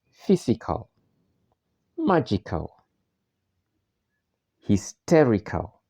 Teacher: the main stress on the antipenultimate syllable that is the third syllable from the last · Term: antepenultimate syllable